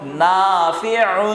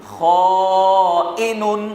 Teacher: عین کو نرم پڑھیں گے، بغیر جھٹکے کے پڑھیں گے، اور حمزہ کو سخت پڑھیں گے اور جھٹکے کے ساتھ پڑھیں گے، جبکہ اس پر ساکن موجود ہو.